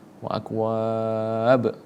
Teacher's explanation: Dan salah satu sifatul hurufnya, yang salah satu hukum tajwidnya itu adalah qalqalah. Harus kita pantulkan huruf ba-nya.